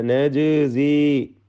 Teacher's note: ജീമിന് ഖൽഖല സുഗ്റ നൽകിക്കൊണ്ട് ജീമിൻ്റെ സുക്കൂൻ ഹറക്കത്ത് പോലെ വ്യക്തമാക്കി ഉച്ചരിക്കണം